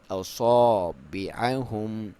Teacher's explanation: کیونکہ صاد ہے اسے موٹا پڑھیں گے تو الف کی بھی ساؤنڈ موٹی آئے گی. اصابعہم، آئین کو کلیئر، میم کا اظہار کریں گے، کلیئر کریں گے اسے.